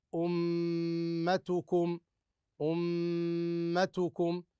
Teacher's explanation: اذا الميم المشدده هنا تغني بمقدار حركتين لادغام الميم الاولى في الثانيه